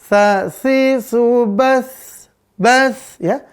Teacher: Udara atau napas berhembus, maka untuk sifatnya dia hamas.